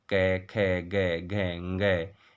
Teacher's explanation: कंठ से उच्चरित होने वाले वर्ण हैं क वर्ग, क, ख, ग, घ, ङ, है और विसर्ग, इनका उच्चारण स्थान कंठ होता है।